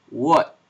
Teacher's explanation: That is, it's pronounced, it's like a double articulation. Your tongue gets near the velum, the back of the palate, and also your lower lip does a kind of a gesture. · And then we would need to add a velar approximant, a voiced velar approximant, which is also labialized. That is, it's pronounced, it's like a double articulation.